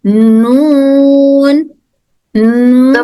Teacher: नून में दोनों साइड्स के बराबर के दांत टच होकर हर्फ नून अदा होता है